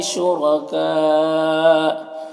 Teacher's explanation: را کے اوپر زبر ہے تو را کو پر پڑھیں گے